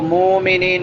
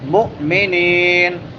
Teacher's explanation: مو جھٹکا دیں گے، عین نہیں پڑھنا، یہاں پہ حمزہ پڑھنا ہے، اور اس کو مومنین بھی نہیں پڑھنا، مؤمنین.